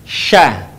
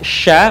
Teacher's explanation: ketika melafalkannya menyebar nafas dan udaranya yang disebut dengan tafasyi perhatikan Sya perhatikan nafasnya menyebar Sya beda dengan tadi Sa Sya